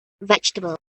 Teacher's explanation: At the beginning of the word, the pitch is relatively higher. It then shows a slight rise and fall during the middle syllables before gradually declining towards the end of the word. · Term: natural English intonation